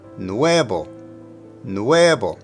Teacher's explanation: let me focus on nuevo. The emphasis is on the E.